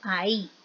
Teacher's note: aquí realmente no hay un diptongo porque la vocal cerrada es tónica